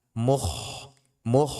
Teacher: kha jangan sampai menjadi ha. Mukh, mukh, jangan mukhlisi, mukh.